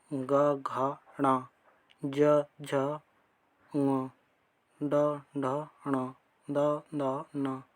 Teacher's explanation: वे वर्ण जिनके उच्चारण में स्वर तंतियाँ अधिक झंकृत होती हैं, उन्हें सघोष कहते हैं।